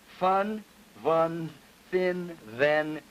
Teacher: Voiceless and voiced spirants, as in fun, vun, thin, then